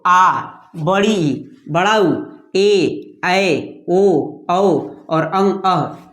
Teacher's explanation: इनके उच्चारण में जो समय लगता है वह अधिक समय लगता है लघु की अपेक्षा दोगुना समय लगता है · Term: दीर्घ